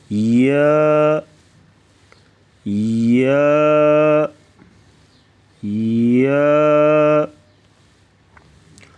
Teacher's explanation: زبان کے درمیان کو تالو کی طرف بلند کرتے ہوئے باریک آواز میں پڑھیں گے